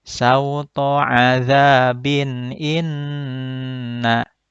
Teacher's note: Bin menjadi izhar karena tanwin bertemu dengan hamzah.